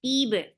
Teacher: for kasra, give e sound attached with ba. Ba will get qalqala. Tib, da is 2 counts long.